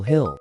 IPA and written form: hɪl (hill)